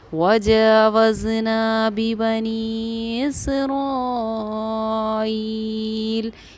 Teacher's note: वजावज़ना बिबनी इसराईल। यहाँ देखिए बी बनी को मैंने कम खींचा बनिस्बत इसराइल के आइल की, इसको हमने ज़्यादा खींचा